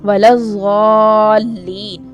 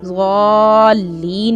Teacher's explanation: یہاں پر ضاد کو کیا کریں گے؟ موٹا بھی کریں گے اور لمبا بھی کریں گے